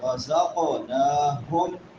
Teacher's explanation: نون کے اوپر کھڑی زبر ہے ایک الف کے برابر لمبا